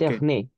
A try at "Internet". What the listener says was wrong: prononce le T. Internet.